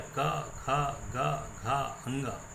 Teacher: स्पर्श व्यंजन कंठ से उच्चारण होता है